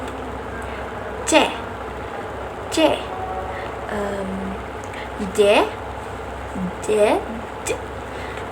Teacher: Selanjutnya ada bunyi laminopalata. Bunyi ini dihasilkan oleh pergerakan bagian tengah lidah yang menyentuh langit-langit keras. Bagian tengah lidah ini berfungsi sebagai artikulator. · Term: bunyi laminopalatal